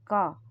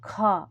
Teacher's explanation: ख में हवा ज्यादा निकली तो यह महाप्राण हुआ